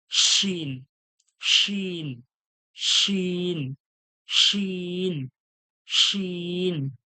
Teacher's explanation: বের করতে হবে হাওয়ার মত চেপে বার করতে হবে শিন শিন জীবের মাঝখান ওর সোজাসুজি তালু থেকে সিটির মত হাওয়াটা বার করতে হবে